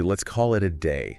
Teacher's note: in let's call it the sounds often blend to sound almost like kalat kat the s links to the k